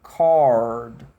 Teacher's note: É a língua tensionada, enrolada para trás.